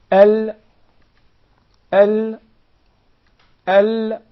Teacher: it comes from the anterior 1/3 of the side of the tongue until the sides end at the tip from here to here then what lies opposite to them of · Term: Lam